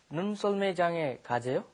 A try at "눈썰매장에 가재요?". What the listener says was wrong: Okay, like a statement. Bring your sentences down. Very nice.